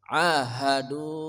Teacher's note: panjang mad thbi'i atau mad asli wau mati sebelumnya dommah